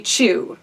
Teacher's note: contrast let's say Choo - - do you guys feel how your tongue like ever-so-slightly reaches your palate your hard palate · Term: palatal